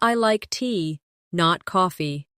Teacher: The stress on tea shows the contrast. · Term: contrastive stress